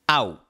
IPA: aw